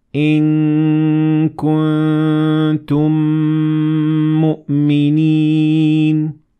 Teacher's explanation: Second, if Meem sakinah is followed by a word beginning with another Meem, you will merge both Meems together, producing one Meem with two harakat